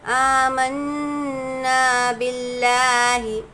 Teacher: آگے دیکھیں گے با لام زیر بل، لام کھڑا زبر لا ہے نا۔ جب بھی اللہ کے لام سے پہلے زیر آ جائے تو اللہ کے لام کو ہم کو باریک پڑھنا ہے · نون پر تشدید ہے، اس لیے یہاں پر غنہ ہوگا، اور ساتھ ہی میں خالی الف سے پہلے زبر، الف مدہ ہے، الف مدہ کو ایک الف کے برابر کھینچ کر پڑھیں گے۔